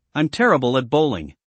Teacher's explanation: You know, when you said I'm terrible at bowling a minute ago, I heard you blend the words together. I'm terrible at sounds like one smooth phrase. That's connected speech.